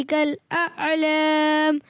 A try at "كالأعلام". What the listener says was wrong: اچھا اعلام, عین ادا کرنا ہے, جھٹکا نہیں آنا چاہیے. اعلام اعلام.